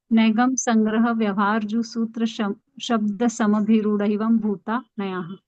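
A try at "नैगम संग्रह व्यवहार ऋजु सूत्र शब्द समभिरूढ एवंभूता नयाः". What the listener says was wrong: हाँ, आप बिल्कुल सही पढ़ा, ऐसा ही आदर्श पाठ करना चाहिए।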